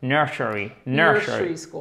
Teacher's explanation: And the stress is on the first part, which is very important.